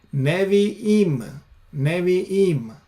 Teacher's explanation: Again, Hirik Yod Mem. And notice the shwa instead of the kamatz, because the stress is on the last syllable, therefore it changes.